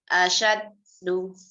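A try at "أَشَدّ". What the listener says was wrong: Nah, bukan asyaddu. Ini kan wakaf. Coba belajar qalqalah kubro akbar nih.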